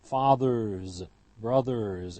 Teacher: After r, the ending will always be voiced as a z.